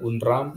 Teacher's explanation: seolah-olah ada muncul bunyi D di antara bunyi N dan bunyi R, ya, di pemisahan suku kata antara un dan ram.